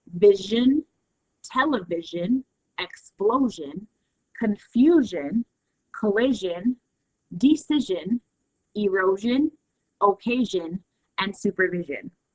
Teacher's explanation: We also have where SION is pronounced jun, more of the Z sound.